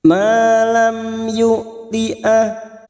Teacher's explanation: Mim sukun bertemu ya, idhar safawi. Mim sukun dibaca jelas tanpa mendengung.